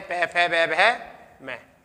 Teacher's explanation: इनका जो उच्चारण स्थान होता है वो क्या होता है? ओष्ठ्य से होता है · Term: प वर्ग